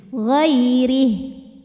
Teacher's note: Huruf ra dibunyikan secara tarqiq sebab ra-nya berbaris di bawah yaitu kasrah. Maka dibacanya tipis, pangkal lidah kita tidak perlu naik. Ghairih. Nah, ini ha walaupun barisnya panjang, kalau berhenti jadi sukun, pendek ri-nya.